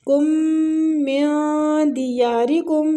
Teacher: میم مشدد غنہ کریں گے، نون ساکنہ کو چھپائیں گے۔